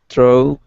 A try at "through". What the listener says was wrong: Really nice job with through. That was a good pronunciation.